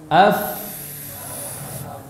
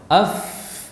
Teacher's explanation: fa makhrajnya tidak rapat, ada celah. Walaupun menyempit, menyempit, tapi tetap ada celah untuk suara bisa keluar. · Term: rakhawah